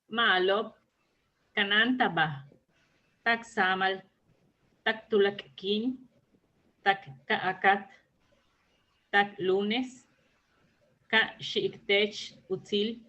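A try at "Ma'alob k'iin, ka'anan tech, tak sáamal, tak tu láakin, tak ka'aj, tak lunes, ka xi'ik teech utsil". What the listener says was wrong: La glotal nada más te medio fallo, pero ahí está.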